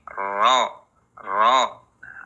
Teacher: ada getaran di ujung lidah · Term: takrir